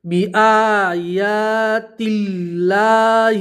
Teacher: اللہ کے لام سے پہلے زیر ہے تو اللہ کا لام باریک پڑھیں گے